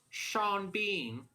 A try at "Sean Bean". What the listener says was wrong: Bean. It always sounds like beam when you're saying it. It sounds like you're saying beam. At the end of that.